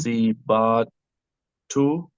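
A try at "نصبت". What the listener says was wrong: This doesn't have a sound. Remember, it doesn't have a vowel. nusibat. Nusibat. So you just have the sound nusibat. Okay, it's a sukun.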